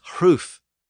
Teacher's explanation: They were often pronounced with a slight breathy sound before the initial R.